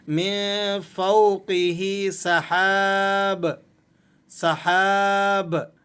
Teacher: اب آخری بات آپ کو وقف کے حوالے سے سمجھا دیتے ہیں کہ اگر ہم با پر وقف کریں گے تو اس با کی جو دو پیش کی تنوین ہے اسے ہم نے سائلنٹ کر دینا ہے، اور با کو ہم نے قلقلے کے ساتھ ادا کرنا ہے